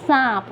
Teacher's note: उच्चारण नाक से और मुख दोनों से किया जाता है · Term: अनुनासिक